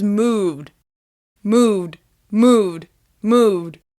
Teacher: the -ed ending sounds like d after voiced sounds